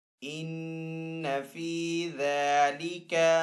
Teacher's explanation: نون مشدد ہے تو یہاں پہ غنہ کر کے پڑھیں گے. ذال کے اوپر کھڑا زبر ہے تو ذال کو ایک الف دو حرکات کے برابر کھینچ کر ادا کریں گے.